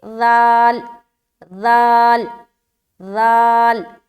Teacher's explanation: سامنے کے دو دانت اوپر والے، اس کے کنارے پر زبان کی نوک کو لگانا ہے، اس کے بعد اوپر کے جو دانتوں کی جڑ ہے وہاں پر ٹچ کرنا ہے۔ · ذال میں نرمی اور بغیر سیٹی کے ادا ہونے والا حرف ہے یہ۔ اس بات کا خیال رکھے کہ آواز میں سختی نہ ہو اور آواز میں سیٹی پن نہ ہو، یعنی کہ آواز میں سیٹی نما جو ظاہر ہوتی ہے نا ساؤنڈ، وہ نہ ہو۔